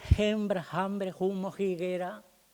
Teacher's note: pronunciación aspirada de la velar, que era esa pronunciación aspirada de hembra, hambre, humo, higuera